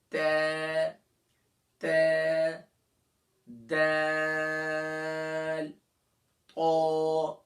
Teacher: tip of دا tongue and دا roots of upper front teeth, یعنی کہ زبان کی نوک اور ثنایا علیہ اوپر کے سامنے کے جو دو بڑے دانت ہیں اس کی جڑ پر لگائیں گے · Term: متحد المخارج